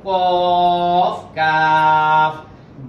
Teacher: জিভার গোড়া থেকে একটু আগে বাড়াইয়া তার উপর উপর তালুর সঙ্গে লাগাইয়া দুইটা হরফ কফ কাফ